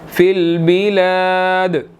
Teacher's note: دال حروف قلقلہ میں سے ہیں، یہاں پر ہم قلقلہ کریں گے